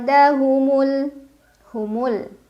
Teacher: nun sukun dibunyikan samar-samar ke huruf dal sambil dengung. Jadi pada saat membunyikan nun sukun sudah siap-siap ujung lidahnya mau nyentuh pangkal gigi seri atas, mau bunyiin dal. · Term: ikhfa aqrab